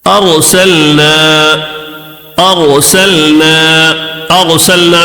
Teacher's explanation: ارسلنا میں را ساکن سے پہلے زبر ہے تو اس کی وجہ سے را کو موٹا پڑھیں گے